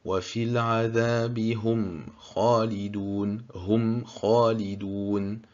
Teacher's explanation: quand il s'agit d'effectuer al-idhar, on ne dissimule pas le mim, on le prononce clairement.